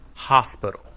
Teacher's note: in hospital the first syllable is stressed